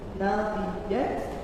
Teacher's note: huruf tak ini tidak hanya cuma punya sifat hamas, tak ini juga punya sifat syiddah alias kuat, sehingga hamas atau hembusan nafas ini tidak terlalu keluar secara banyak.